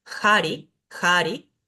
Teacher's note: la H que nunca es muda y suena como una J suave